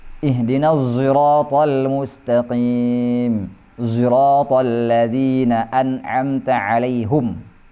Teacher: huruf shad yang dilafalkan bercampur dengan suara zai. Istilahnya ismamu shadi zayan.